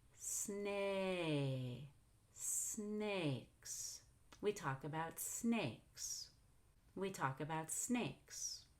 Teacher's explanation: I go up on snake and down on snake.